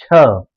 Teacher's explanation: बोलना हो आपको छ, तो पूरी जीभ का जो मध्य भाग है वो पूरा ऊपर जाता है और ऊपर बाद में सटता है वो, छ।